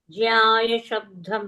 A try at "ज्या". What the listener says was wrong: Yeah, you don't supply. Jya only.